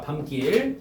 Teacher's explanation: 된 소리 되기의 환경이 아님에도 불구하고 된 소리로 발음이 된단 말이야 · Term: 사이 소리